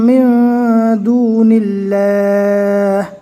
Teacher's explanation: اللہ کے لام سے پہلے زیر ہے، اس لیے اللہ کے لام کو باریک پڑھیں گے